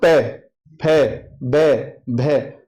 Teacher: जब बोलना है ना हम प फ ब भ तो होठ मिलना है · देखो जब बोल रहे हैं ना हम पे, फे, बे, भे, तो होठ मिल रहा है, जिनके बोलने में होठों का या ओष्ठ का प्रयोग हो वो ओष्ठ्य